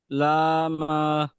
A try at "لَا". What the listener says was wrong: লাম হা নয়, লাম জবর লা পড়ছি তো, লাম জবর লাম পড়ছি না, লাম জবর লা, তখন পাল্টে যাচ্ছে। যখন হারাকাত আসছে তখন তো পাল্টে যাচ্ছে না, লাম জবর লা হচ্ছে এবং হা আলিফ জবর হা, ওটা আলিফ মাদ্দ হচ্ছে, তাহলে কি হবে? লাহা।